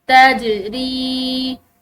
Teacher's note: تجری، را کے بعد یا ساکن آ رہا ہے تو اس کی وجہ سے اس کو ایک الف کی مقدار لمبا پڑھیں گے